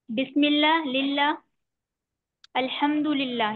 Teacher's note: बिस्मिल्लाह, लिल्लाह, अल्हम्दुलिल्लाह, ये सब बारीक पढ़े जाते हैं। इसमें लफ्ज अल्लाह के लाम को बारीक पढ़ते हैं।